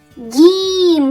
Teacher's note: в цьому слові чутно М'який приголосний д